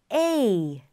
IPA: eɪ